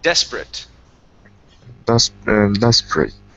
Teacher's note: the A-T-E at the end, that's actually a short I and a T sound